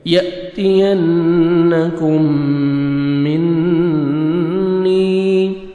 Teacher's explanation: نون مشدد نوز میں ساؤنڈ لے کے جائیں گے. یا مدہ 1 سیکنڈ نون کو کھینچنا ہے. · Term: غنہ